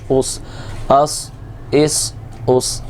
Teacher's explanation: حمزہ سین زبر اس، حمزہ سین زیر اس، حمزہ سین پیش اس، اس اس، حمزہ صاد زبر اس، حمزہ صاد زیر اس، حمزہ صاد پیش اس، اس کے اندر موٹا بھی ہونا چاہیے کیونکہ یہ حروف مستعلیہ میں سے اور سیٹی بھی آنی چاہیے